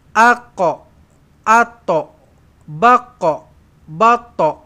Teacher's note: walaupun kena lantun tetapi qaf dan juga ta lantunan itu mulutnya kena bulat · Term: Qalqala